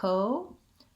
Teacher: we still have to do the diphthong o but we don't hold it for that long because it's an unstressed syllable our stressed syllable is the op